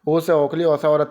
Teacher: ओ से ओखली, औ से औरत की जो बोलते हो आप, कंठ ओष्ठ होती है